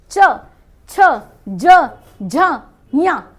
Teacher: जीभ कहां लग रही है जाके तालू पे